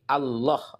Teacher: ketika lam ketemu lam harus dibaca tebal, tafkhim atau idgham